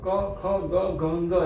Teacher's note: ખ નો મતલબ જ એ છે કે ક ને થોડાક વધારે પ્રાણ સાથે બોલતા એ ઓટોમેટિક ખ માં પરિવર્તિત થઈ જાય છે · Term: મહાપ્રાણ